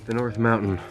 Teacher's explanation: There is a stop T sound in the middle of the word mountain.